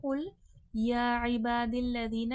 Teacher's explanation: یہاں پہ کھڑا زبر ہے، 1 سے 2 الف کی مقدار کے برابر کھینچ کے پڑھا جائے گا۔ با میں دیکھیں الف مدہ ہے، الف سے پہلے زبر ہے، الف مدہ ہے، کھینچ کے پڑھا جائے گا۔